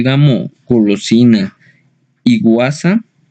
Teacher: El fonema velar sonoro